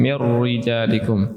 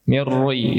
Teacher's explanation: hindarilah membaca kata mir rijalikum dengan tafkhim ( penebalan) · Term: tipis